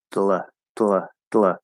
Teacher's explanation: What I'm doing is I'm going into the D, and as I release the D, I'm not actually releasing the tip of my tongue. Okay, what I'm doing is I'm keeping the tip of my tongue there, and I'm actually moving the sides of my tongue.